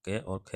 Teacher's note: क और ख जो है वो कंठ ध्वनियाँ हैं, जिनका उच्चारण कंठ से किया जाता है, वो कंठ ध्वनियाँ कहलाती हैं।